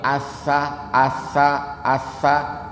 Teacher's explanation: kita coba ucapin Asa Asa itu sampai kita bener-bener luas ngucapinnya lidahnya harus keluar kalau lidahnya nggak keluar jadinya Sin nantinya itu salah